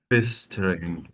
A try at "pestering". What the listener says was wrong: That's better.